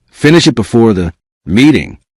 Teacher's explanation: Notice how finish it may connect and how the final sound in it may become light